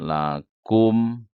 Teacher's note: tahan, M-nya banyak, 4, 3 detik, jangan kurang. Lakum, kira-kira aja ya. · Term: idgham mimi